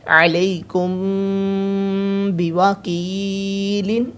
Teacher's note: میم ساکن کے بعد با ہے، گنہ کرنا ہے۔